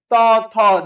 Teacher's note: ত থ, দেখেন আপনার জিহ্বা কোথায় যেয়ে স্পর্শ করছে? দাঁতকে স্পর্শ করছে। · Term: দন্ত